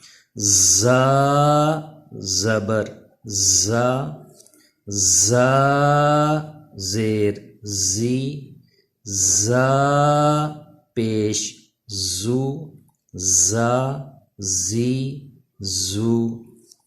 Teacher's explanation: زا پہ سیٹی پیدا ہونی چاہیے، یعنی زبان دانتوں سے پیچھے رہے